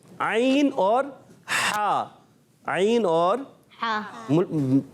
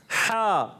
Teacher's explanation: हलक के दरमियान वाले हिस्से से